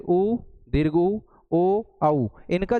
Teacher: यानी कि उ, दीर्घ ऊ, ओ, औका जब हम उच्चारण करते हैं तो यह कहीं ना कहीं हमारा जो होठ है ये जो आपके लिप्स हैं ये लिप्स वृत्त के समान गोल हो जाते हैं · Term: वृत्ताकार स्वर